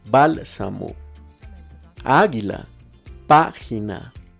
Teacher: Esdrújulas. Su acento prosódico o sílaba tónica está en la antepenúltima sílaba y todas las palabras esdrújulas llevan tilde.